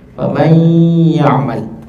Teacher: idgham naqis masih ada hurufnya. Jadi tidak betul-betul masuk ke huruf setelahnya.